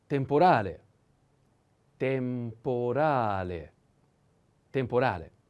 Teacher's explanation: The accent is on A. Temporale.